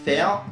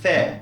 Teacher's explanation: lorsqu'il est censé prononcer le son /eɪ/, suivi de la R, l'anglais prononcera plutôt un /eə/